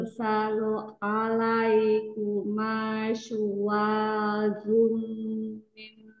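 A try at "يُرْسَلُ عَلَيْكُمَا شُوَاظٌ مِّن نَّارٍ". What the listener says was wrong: suaranya ujungnya hilang. Yursalu'an, ainnya lebih masuk ya.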